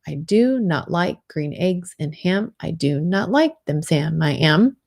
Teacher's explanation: iambic where you have an unstressed syllable followed by a stress so it goes unstressed stressed unstressed stress